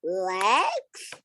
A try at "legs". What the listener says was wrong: Okay, you need to say it to me with confidence. Like the answer is legs, like that, not legs. Because it sounds like you're guessing only.